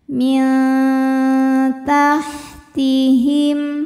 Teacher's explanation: nun sukun dibunyikan samar-samar, siap-siap menuju makhraj huruf ta disertai bunyi dengung. Bunyi dengungnya sedikit saja. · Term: ikhfa aqrab